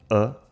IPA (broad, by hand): ə